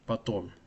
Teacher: So the second O is stressed and the first O sounds like ah.